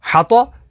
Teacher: تو حروف مستعلیہ میں سے تو اسے پر یعنی موٹا پڑھیں گے